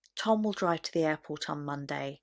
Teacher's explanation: I've just read that in a very neutral tone of voice without any sentence stress